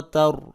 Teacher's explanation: را کو پر کر کے پڑھیں گے کیونکہ را ساکن سے پہلے والے حرف جو ہے اس کے اوپر زبر ہے